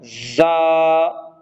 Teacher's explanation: اس میں سیٹی کا ہونا ضروری ہے، 1 سیکنڈ کھینچنا ہے